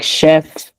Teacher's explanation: Except, some words like, they might have different origin, like chef, even though they have a CH, we still pronounce them like a, sh sound